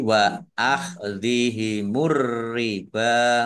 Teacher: Ar-riba alif lam samsiyah karena tidak dibaca langsung masuk ke huruf berikutnya yaitu ro, ditandai roknya ada tasdidnya, roknya dibaca double